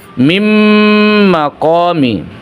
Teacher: Jadi huruf nunnya tidak lagi dibaca, tapi langsung menjadi huruf mim. Ditahan, ingat, ditahan. Kira-kira 2 harakat. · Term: idgham